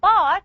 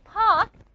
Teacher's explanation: So when you say bark, you're using the voice sound B. When you say park, you're using the voiceless sound P. It means the sound B has a vibration in the vocal force, but the sound P does not have a vibration in the vocal force.